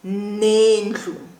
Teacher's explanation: We are using the conjunction na. So the na plus the I join together and we have ne